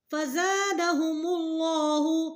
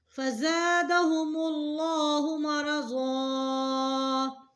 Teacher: لام موٹا ہوگا کیونکہ پیچھے پیش ہے